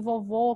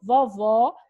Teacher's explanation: Vovô, timbre fechado, vovó, acento agudo, timbre aberto